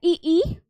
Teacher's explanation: तो आपका तालु तालव्य क्या हो गया है, ई, तालु के अगले भाग स्पर्श करेगी हमारी जिह्वा